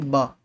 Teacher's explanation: सघोष जिसको बोलते हुए आपकी स्वर तंत्रिकाएं झंकृत होंगी